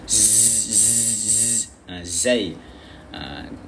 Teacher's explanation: Hujung lidah kita tekan di belakang gigi sebelah bawah. Gigi sebelah bawah bahagian dalam